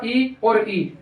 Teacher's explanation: इनका उच्चारण स्थान है वो अपने तालू से होता है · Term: तालव्य स्वर